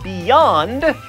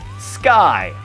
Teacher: when you say words like beyond, you actually use your tongue up there, the roof of the mouth, for the Y, so that is not a vowel. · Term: consonant